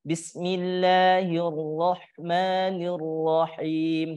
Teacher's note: huruf ro yang berharokat fathah, baik itu dia ada tasdidnya, kemudian dia tidak ada tasdidnya, maka harus dibaca tebal ya Ibu, atau dibaca tafkhim.